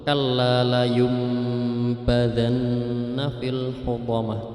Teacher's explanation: Ini bacaan iqlab, nun mati bertemu dengan ba, itu wajib dibaca mulut tertutup